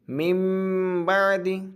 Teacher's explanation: ہجا کریں گے تو نون کا ہی نام لیں گے، لیکن جب با کے ساتھ ملا دیں گے تو اب نون کو چھپا دیں گے ناک میں گنہ کے ساتھ